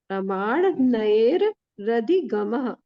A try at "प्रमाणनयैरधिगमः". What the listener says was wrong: नहीं र 2 बार नहीं है।